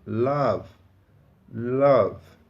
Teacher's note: Você consegue sentir a vibração no início da pronúncia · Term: voiced sound